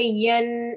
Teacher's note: And this yeah, if you were to pause, you will end up elongating the sound and saying yeah. But if you are not pausing, you can just say yen and give a 2-second sort of a nasal sound there